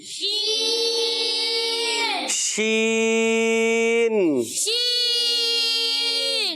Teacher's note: اور آپ کے زبان کا درمیان, تالو کا درمیان, یعنی یہ زبان کا درمیان حصہ اور اوپر تالو کا درمیان حصہ, ان کے درمیان سے نکلتا ہے شین